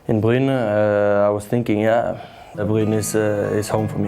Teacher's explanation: It's a guttural R. Back of the throat, basically French.